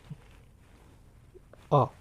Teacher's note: तो इसमें क्या होता है? जीभ बिल्कुल आराम से बीच में रहती है, ना आगे जाती है ना पीछे। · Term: मध्य स्वर